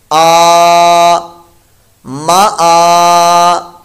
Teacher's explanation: نہ لگا ہوا، تو اب یہ الف پڑھیں گے، یہاں پر الف کے اوپر کھڑا زبر ہے، تو اس لیے اس کو ہم لمبا کر کے پڑھیں گے، حمزہ کی ادائیگی کے ساتھ ، ایک الف 2 حرکات کے برابر لمبا کریں گے، کیونکہ